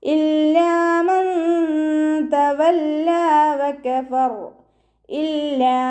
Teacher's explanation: ലാമിന് ശബ്ദം വന്നു, രണ്ട് ഹർഫുകൾ ഉച്ചരിക്കുന്ന കനം കൊടുക്കുക